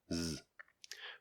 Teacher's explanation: the Z phoneme is a voiced alveolar fricative